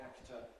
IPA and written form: ˈæktə (actor)